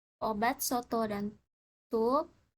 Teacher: vokal o kecil vokal belakang sedang bundar